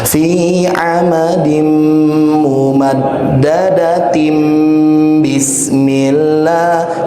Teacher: kalau diwasal, kalau disambung, maka tinnya diganti menjadi tim pakai M. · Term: hukum iqlab